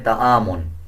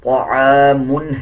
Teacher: طا کو پر یعنی موٹا پڑھا جائے گا، طا موٹے حروف میں سے آتا ہے۔